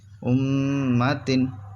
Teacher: تا دو زیر تن امتن. میم مشدد ہے اس وجہ سے گنہ ہوگا